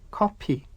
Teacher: Koreans borrowed this word from English, but the Korean language has no F sound, so they say coffee.